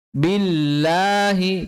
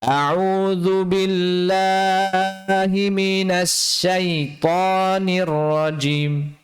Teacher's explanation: Kemudian lafzul jalalah ini lamnya cukup kita panjangkan 2 harokat saja. Ya, kan ini mat tabi'i.